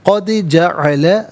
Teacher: قد دال ساکن ہے لیکن یہاں حرف قلقلہ ہے تو آواز لوٹتی ہوئی محسوس ہونی چاہیے